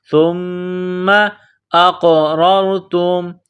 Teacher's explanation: سا کو میم کے ساتھ ملائیں گے، میم مشدد ہے، غنہ کریں گے، آواز ناک میں چھپائیں گے